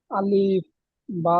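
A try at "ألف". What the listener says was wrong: আলিফ, শব্দটা আলিফ। আলিফ একটু ফাস্টলি বলতে হবে। হ্যাঁ, আলিফ।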